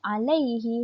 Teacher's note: huruf lam berjumpa dengan ya yang bertanda sukun menjadi madlin, iaitu dibaca dengan bacaan yang lembut